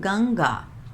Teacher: गंगा नाक से उच्चारण करते हैं